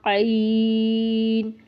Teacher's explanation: عین تو ہماری آواز حلق سے نکلنی چاہیے نہ کہ ناک سے نکلنی چاہیے